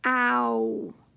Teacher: Ooh, my mouth has to open wide. Ah, and then say ooh.